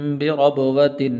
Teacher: یہاں پر غنہ نہیں کریں گے اس لیے کہ آگے حمزہ حروف حلقی میں سے ہے · را، اس کے اوپر زبر ہے تو پر کر کے پڑھیں گے